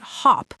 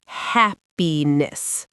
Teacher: It's not hep and it's not hop. It's that short ah sound, like in the word cat or trap, right in the middle of your mouth.